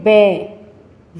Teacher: यह दंत और ओष्ठ के दोनों के प्रयोग से ही इसकी ध्वनि निकलती है। तो व का जब हम उच्चारण करते हैं तो इसमें हमारे होठ भी काम आते हैं और दंत से भी स्पर्श होता है। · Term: दंतोष्ठ